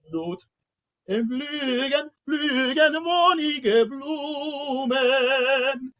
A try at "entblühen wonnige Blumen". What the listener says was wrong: And it's blue and there's no G. It's warmen Blut entblühen. And there's no G. Entblühen wonnige Blumen.